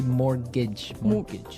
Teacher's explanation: it has a T in it, but you don't pronounce it. You say mortgage.